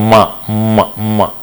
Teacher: you can see that the vocal tract is closed at the lips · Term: nasal sounds